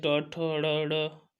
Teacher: मूर्धन्य होते हैं ट ठ ड़ ढ